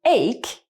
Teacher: For example, we have the word ache containing CH, very common combination, and the sound is a hard K, so that the H is actually silent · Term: silent H